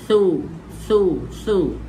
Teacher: Hal thuwi, yang ni bukan huruf sin, ni huruf tha, keluar hujung lidah anda di antara gigi gunting.